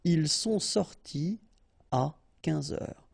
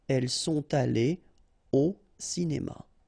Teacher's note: no liaison after your participe passé here